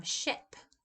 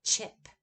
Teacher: Another substitution is deaffrication, and that would be the substitution of a fricative for an affricate. So chip would become ship.